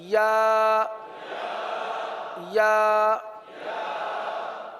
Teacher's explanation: जबान का दरमियां और तालु का दरमियां · زبان کا درمیان اور تالو کا درمیان